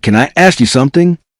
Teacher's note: The final N in can connect smoothly with the vowel sound in I. Then I flows directly into ask. The first part may sound almost like one word.